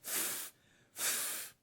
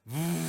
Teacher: course we practice making the F sound which is done by putting the upper teeth on the lower lip and you get the sound f f of course now we vocalize it and it comes out as V